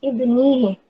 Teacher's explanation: Karena sebelum hak domir ada huruf hidup berharokat dan cara membacanya panjang dua harokat seperti mad tabi'i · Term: mad sila qasirah